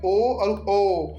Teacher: कंठ और ओष्ठ, मतलब कंठ जो और ओष्ठ का दोनों का यूज होता है